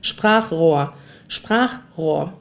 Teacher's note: dieses CH wird quasi hier hinten gebildet, wenn ein A davor ist. So wie bei Krach.